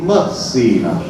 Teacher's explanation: La I in posizione atona è una I molto cupa, molto scura